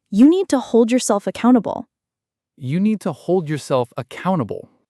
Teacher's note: Notice how the stress lands on hold and accountable. Those are the words carrying the meaning.